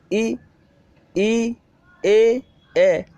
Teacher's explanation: इन स्वरों के उच्चारण में जीभ का अग्रभाग कार्य करता है। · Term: अग्रस्वर